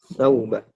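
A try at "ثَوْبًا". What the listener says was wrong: Thawba. Ini salah ya, bukan thawaba. Tadi sudah kita koreksi.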